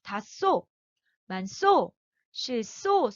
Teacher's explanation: 다쏘, 만쏘, 실쏘, 소로 스로 발음이 된다는 거. 히읗과 시옷이 만나면 쌍시옷으로 된다 · 이 시옷이라는 소리가 나는 굉장히 마찰이 강한 소리거든요. 얘는요. 쌍시옷, 스로 발음이 됩니다.